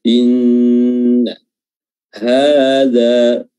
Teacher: inna nun tasydid ditahan durasinya. Inna hadza 2 harokat saja dua-duanya, ha dan dha.